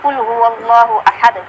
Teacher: قلقلہ ہوا ہے. یعنی دال کو ہم تھوڑا سا زیر کی آواز میں پڑھیں گے